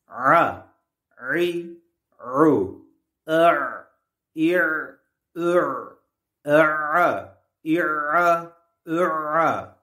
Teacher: Ayn harfi boğazın orta kısmının sıkılmasıyla çıkar.